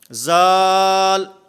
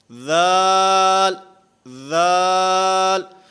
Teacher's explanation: ذال میں اس کی ادائیگی میں زبان دانتوں سے ٹکراتی ہے، دانتوں کے ساتھ زبان لگتی ہے، اور پھر خصوصاً بچے جس وقت اس کو پڑھتے ہیں تو وہ پڑھتے ہیں زال، یہ زال نہیں ہے، ذال، ذال۔